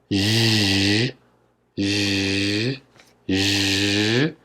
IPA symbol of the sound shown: ʒ